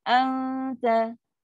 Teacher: Dia kata ifat ni tersembunyi. So nun tu nak sembunyi dekat ta tu senang sebab dia dah memang makhraj pun dekat sangat. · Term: dengung